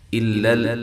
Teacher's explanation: الا لام دونوں باریک ہیں اس کو ہلانا نہیں ہے